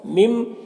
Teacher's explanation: میم مشدد ہے تو غنہ کے ساتھ میں پڑھیں گے